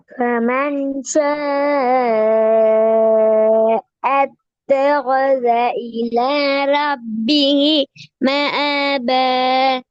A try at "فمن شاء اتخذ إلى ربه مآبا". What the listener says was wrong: நீட்ட வேண்டியதை நீட்டி ஓதுங்கோ. மூச்சு போகுது அடிக்கடி, திருப்பி ஓதுங்க. இலாண்டு ஓத இலாண்டு ஓதக்குள்ள மூச்சு இல்ல காணாம போயிட்டு ஓதலுமா அப்படி? இலா இலா இந்த மூச்சில் போட்டு ஓதப்படாது, சரியா ஓதணும் பிழை.